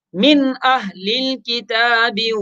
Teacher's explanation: نون ساکن کے بعد حمزہ ہے، نون ساکن کے بعد حروف حلقے میں سے حمزہ آ رہا ہے تو نون میں اخفا نہیں ہوگا بلکہ نون کو ظاہر کر کے پڑھیں گے